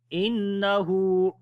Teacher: on the noon there is a shadda sign, we make gunna